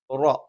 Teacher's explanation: നാവിന്റെ തലയുടെ മുതുക് മേലെ മുൻപല്ലിന്റെ മോണയിലാണ്